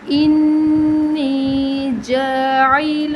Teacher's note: نون مشدد ہے، غنہ ہوگا